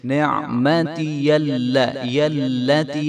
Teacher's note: بھی حرف کو جو ہے لمبا نہیں کرنا نعمتی میں، اور یا کو لام کے ساتھ ملائیں گے تو یا کی آواز بھی آنی چاہیے ۔ نعمتی التی، لام کو بری پڑھیں گے، یاللہ نہیں کریں